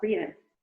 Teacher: Por exemplo, na palavra escrito, em inglês, written, você pode engolir o som desse T. Então, você pode falar written. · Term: glottal stop